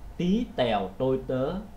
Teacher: khi cái âm tờ trong tiếng Việt đó, thì nó bật hơi rất là ít. Thí dụ như là bạn để tay trước miệng và bạn nói là tí tèo tôi tớ, bạn thấy hơi nó ra rất là ít.